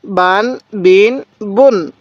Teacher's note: বা এর উপর দুই পেশ থাকলে বুন তাহলে বান বিন বুন আমি কিন্তু কোন টান দিতেছি না আর পূর্বেই বলছি তানবিনের উচ্চারণ বাংলায় দন্তন্য উচ্চারণ হয়